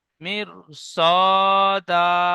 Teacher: র সাকিনের ডানদিকে জের এসেছে তাই র কে বারিক করে পড়বো। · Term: র বারিক